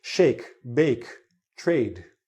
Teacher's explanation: a with a line across it makes it a bit longer it's called a diphthong because it's a e it's like almost two vowel sounds in one